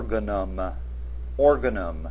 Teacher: notice that the word has the accent on the first syllable